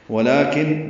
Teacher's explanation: نون مشدد پہ غنہ ہے، اس کو لام سے ملا دینا ہے